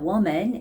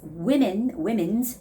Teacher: it's not woman, it's women, women's with an E sound there